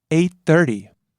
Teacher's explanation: Starts low, rises on chi, the second syllable, stays high until the last syllable where it drops down